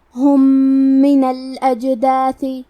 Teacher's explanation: ادغام کا معنی ہے حرف کو حرف میں داخل کرنا، تو ہم پہلے میم کو دوسرے میم میں ملا کے ایک ہی میم غنہ اور تشدید کے ساتھ پڑھیں گے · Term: ادغام متماثلین صغیر